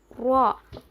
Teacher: زبان کے سائڈ کے حصوں کو لیفٹ اور رائٹ سائڈ کے گمز کو لگانے سے رو ادا ہوتا ہے. رو کو ہم موٹا پڑھیں گے.